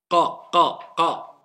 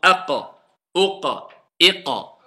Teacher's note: la racine de la langue doit monter et toucher le fond du palais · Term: qaf